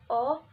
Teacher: bunyi vokal Oh agak rendah belakang dan bulat